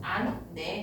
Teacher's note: 니은, 히읗, 리을, 히읗 뒤에 니은이 결합되는 경우에는 히읗을 발음하지 않는다. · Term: 히읗 탈락